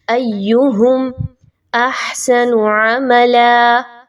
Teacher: یا کے اوپر سیٹی کی آواز نہیں آنی چاہیے، لیکن حمزہ اور یا کو مضبوطی کے ساتھ ضرور ملایا جائے گا